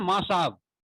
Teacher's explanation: माँ साहब कहने का तात्पर्य है कि वहां पर ध्वनि लोपन कर दिए, ध्वनियों का कुछ ध्वनियों का हम लुप्त कर दिए, विलोप्त कर दिए, तो इसी को हम ध्वनि लोपन कहते हैं।